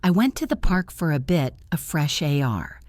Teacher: The stress is on park and air. The rest is just the schwa sound connecting them.